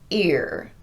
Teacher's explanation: on ear, I'm starting that beginning sound abruptly with no glide.